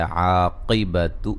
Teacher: عاقبت قاف کو موٹا ادا کریں گے